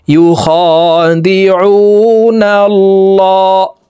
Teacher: واو পেশ উ নুন লাম জবর নাল লাম খারা জবর ল আল্লাহ শব্দের আগের হরফে জবর আছে, এই কারণে এই লামকে ল বলে অর্থাৎ মোটা করে পড়ব।